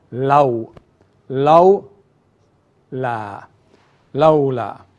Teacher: Even though the wow is has no vowel, but the wow is not lengthening the Dhamma song because there is no Dhamma before. So we would not say lu, but we say la, and then join to the wow